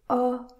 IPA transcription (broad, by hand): ə